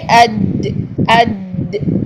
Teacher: ज़ुबान का बिल्कुल मिडल ऑफ द टंग जो है ये ऊपर तालु के साथ लग रही है, चिपक कर अदा हो रही है।